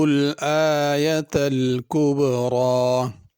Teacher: را پہ کھڑی زبر، اس کا خیال کرنا ہے۔ کبرا میں چھوٹا کاف ہے، اور را پر پڑھی جائے گی، را باریک نہیں ہوگی۔